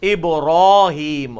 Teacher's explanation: پھر یہ ابراہم جس طرح وہ کہتے ہیں، ابراہیم ہے، را الف زبر را، ابراہیم، را کو بھی پر پڑھنا ہے